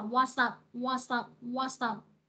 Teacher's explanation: chữ s này nó sẽ nối với nguyên âm ở phía sau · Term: nối âm